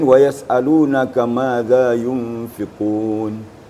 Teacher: Zal ini kembarnya ada juga zai. Jadi kalau zal yang di sini halus bacaannya, ditemukan ujung lidah dengan papan gigi atas, maka keluarlah suara zal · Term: huruf zal